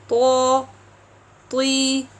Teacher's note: we have to elevate the back part of the tongue and keep the sound inside the mouth, not pushed outside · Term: heavy letter